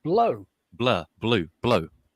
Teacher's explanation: the reality is that blue contains not a static vowel like blur but just the same kind of changing quality as blow